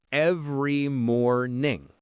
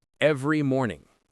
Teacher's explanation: Some words are more important. In every morning, the important syllables are ev and more.